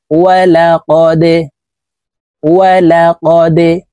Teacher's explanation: দাল কলকলার হরফ নিচের দিকে ধাবিত করে ধাক্কা দিয়ে উচ্চারণ করে পড়ব